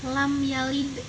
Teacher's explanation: Qolqolah Sugro itu ia pantulannya ringan saja dan ada di tengah kalimat · lam yalid ini dipantulkan dengan ringan saja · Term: qalqalah sugro